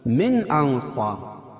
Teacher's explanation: من انصار اظہار حلقی، کیونکہ نون ساکن کے بعد حروف حلقی کے 6 حرفوں میں سے حمزہ ہے. انصار اخفا حقیقی، کیونکہ نون ساکن کے بعد حروف اخفا کے 15 حرفوں میں سے صاد ہے تو یہ ناک میں آواز کو چھپا کر پڑھیں گے.